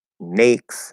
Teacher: she's actually using the start of the diphthong a. But she's not completing the diphthong